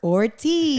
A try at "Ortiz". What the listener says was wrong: Ortiz, no. No, tiene acento, es Ortiz.